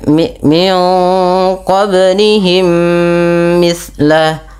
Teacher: mim yang pertama dimasukkan kepada mim kedua dan ditahan sepanjang 2 harakat · pada lafal qablihim ada bacaan qalqalah yang di mana huruf bnya wajib kita pantulkan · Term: idgham mimi